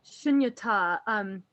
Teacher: So you pronounce it shunyata with the emphasis on the last syllable if you're going to treat it as a noun.